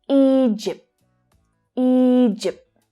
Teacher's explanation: So there's the long vowel sound followed by the /dʒ/ consonant sound.